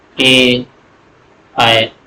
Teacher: इ ए इन सब में आपके होंठ का गोलाकार नहीं हुआ।